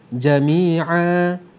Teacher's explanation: Jikalau kita berhenti pada alif yang merupakan huruf terakhir sebelum huruf berbaris dua di atas, jami'an, ain baris dua di atas alif, maka kita berhenti dengan baris yang satu, bunyinya dua harakat. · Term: mad iwad